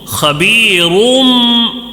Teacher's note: غنہ بھی کرنا ہے، اقلاب میں غنہ بھی کرنا ہے اخفا کی طرح